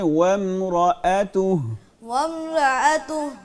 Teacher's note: عین نہ پڑھیں حمزہ پڑھیں